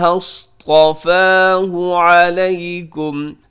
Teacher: یہاں پہ جو صاد ہے صاد موٹا پڑھا جائے گا، اس کے بعد جو طا ہے طا بھی موٹا پڑھا جائے گا